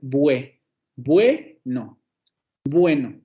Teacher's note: Vocal cerrada, posterior labializada, la U. Y luego tenemos la vocal semicerrada anterior no labializada, la E. Entonces esas dos vocales van a formar un diptongo y le vamos a poner bue.